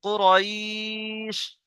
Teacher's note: এটাকে বলা হয় মাদ্দে লিন। মাদ্দে লিনকে একালিফ পরিমাণ টান দিয়ে পড়তে হয়।